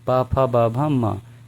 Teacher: पा वर्ग की बात की जाए तो इसे हम ओष्ठ से बोलते हैं।